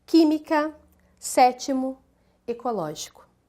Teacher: todas aquelas que têm a sílaba tônica na antepenúltima sílaba